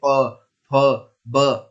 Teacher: हमारी जीभ होंठों के पास आकर टकराती है, जैसे आप बोलेंगे प फ ब, और हमारे होंठ दोनों आपस में मिलते हैं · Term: ओष्ठ